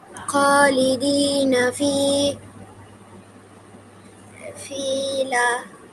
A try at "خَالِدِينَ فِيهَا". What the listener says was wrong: এটা লা না, এটা হা। ফিহা।